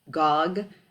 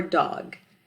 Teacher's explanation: backing that is when the alveolar sound is substituted with a Velar sound for instance Gog for dog